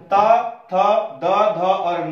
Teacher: त, थ, द, ध, न के उच्चारण में जीभ टकरा रही है दांतों से, तो इसका उच्चारण स्थान है दंतव्य व्यंजन।